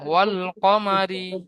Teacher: র এর নিচে জের আছে >> তাই র কে বারিক করে পড়তে হবে